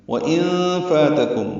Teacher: نون ساکن کے بعد فا آنے کی وجہ سے نون ساکن پہ اخفا ہے، نون کی آواز چھپائیں گے